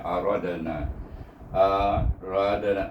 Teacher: Kalau kita berhenti, rada kuat bunyi lantunannya, tetapi oleh kerana kita sambung dengan na, dia jadi perlahan. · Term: qalqalah surah